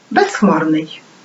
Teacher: перед глухим приголосним при швидкій вимові може оглушуватись